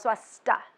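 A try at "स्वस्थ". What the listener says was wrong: The H is silent.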